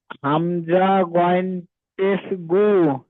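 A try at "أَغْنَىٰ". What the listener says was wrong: এটা পেশ না, এটা গইন পেশ নয়, এটা জাবার আছে। হামজা গইন জাবার, হামজা গইন জাবার আগো, হামজা গইন জাবার আগো মা, আগ পড়েন।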